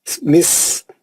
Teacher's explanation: سین کی سیٹی مارنا، پھر مد اصلی ہے